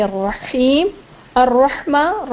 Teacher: رحمان میں میم پر کھڑا زبر وہی ایک الف کی مقدار کے برابر کھینچنا ہے ، رحیم میں ہا یا زیر ہی ہے، یعنی اب دیکھیں